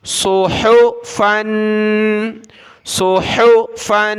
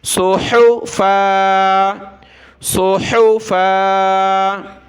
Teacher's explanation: جب رکیں گے تو اس کو کھینچنا ہے، آخر میں الف پڑھنا ہے کیونکہ دو زبر کی تنوین ہے.